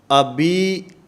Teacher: ابی اور یا معروف ادا کرنی ہے، مجہول نہیں کرنی